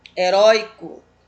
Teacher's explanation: Penúltima sílaba mais forte da palavra heróico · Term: paroxítona